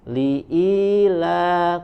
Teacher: Li'ila, kemudian ada huruf lam ya, dibaca dari huruf lam, makhrajnya dari adna hafatul lisan ya, adna hafatul lisan sampai muntahal hafah ya, dari sisi lidah bagian depan. Li'ila, kemudian huruf la-nya dibaca dengan tipis suaranya.